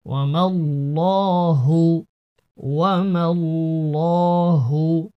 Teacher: ওকে, ওয়াও জবর ওয়া, মিম লাম জবর মাল, ওয়া মাল, এখানে আল্লাহ শব্দের এই লামটি মোটা পড়তে হবে, পুর পড়তে হবে।